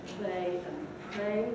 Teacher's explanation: there's some voicelessness in the L and the R there